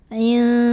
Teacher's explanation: ha mad tabi'i karena ada alif sebelumnya fathah, maka dipanjangkan haknya 2 harokat